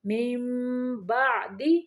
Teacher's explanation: اقلاب کا قاعدہ ہے، نون کی آواز کو میم میں بدل کے پڑھنا ہے